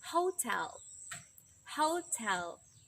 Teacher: So tell in hotel is the first stress of the word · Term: true T